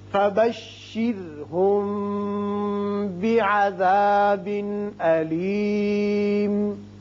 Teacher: میم ساکن کے بعد با آتا ہے، لہذا یہاں اخفاء شفوی ہوگا.